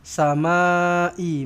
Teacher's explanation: ma panjang empat ataupun lima harakat. Mad wajib muttasil.